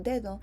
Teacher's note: the D's in Spanish might be seen with a negative VOT, and they are seen with a negative VOT